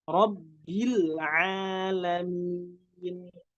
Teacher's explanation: Nggak boleh mantul karena lam bukan termasuk dari huruf qalqalah, tapi harus dibaca dengan inhiraf, dimiringkan lidahnya supaya tidak mantul